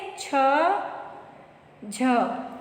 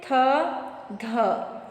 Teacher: जिन व्यंजनों के उच्चारण में हकार की ध्वनि सुनाई देती है उन्हें हम कहते हैं महाप्राण। स्पर्श व्यंजनों में प्रत्येक वर्ग का दूसरा और चौथा वर्ण तथा ऊष्म व्यंजन महाप्राण वर्ण है।